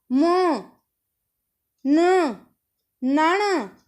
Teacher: अब जब इनको हम बोलते हैं तो हमारी नाक में से आवाज़ निकलती है। जैसे हम बोलेंगे म न नाना, तो हमारी जो आवाज़ है वो हमारी नाक में से निकलती है। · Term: अनुनासिक